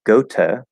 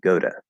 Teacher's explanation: we will very commonly change that t to a flap d goda and this is a super special case because it's a